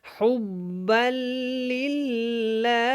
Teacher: سانس کو نکالنا ہے اور ہا کو لام کے ساتھ ملا کے پڑھنا ہے